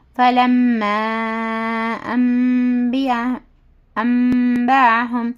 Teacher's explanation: حرف مدہ کے بعد حمزہ دوسرے کلمے میں ہے تو اس کو 2 سے 4 حرکت کے برابر کھینچ کر پڑھنا ہے